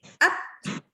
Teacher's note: Jadi pas lepasnya itu akan terdengar suara hamsnya.